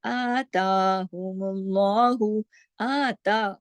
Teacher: آتاہم اللہ، آتا، دیکھیے دونوں پہ کھڑی مد ہے. آتا پورا 1 2 2 حرکات کھینچ کے الف کی برابر پڑھا جائے گا